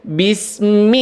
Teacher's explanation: di Bismillahi itu ada fathah berdiri di atas lam itu 2 harokat. Maka di situ diayunkan suaranya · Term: huruf mad yang 2 harokat